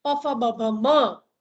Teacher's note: જીભનો આગળનો ભાગ આ ઉપલા દાંતને જઈને સ્પર્શે, ત, થ, દ, ધ, ન, તો દંત્ય વ્યંજન. અને નીચલો હોઠ ઉપલા હોઠને જઈને સ્પર્શે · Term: ઓષ્ઠ્ય વ્યંજન